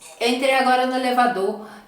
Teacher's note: Além de cortar o R final das palavras que tem R no final, vai dar uma boa ênfase ainda nessa última sílaba